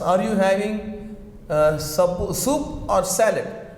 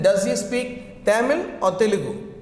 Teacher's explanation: We are seeing rising, falling intonation. This intonation rises and falls, and this is symbol rising, falling.